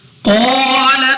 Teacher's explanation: قاف مستعلیہ میں سے ہے، موٹا پڑھیں گے، منہ اور آواز کو کھول کر الف سے پہلے زبر الف مدہ 2 سیکنڈ تک لمبا کرنا ہے۔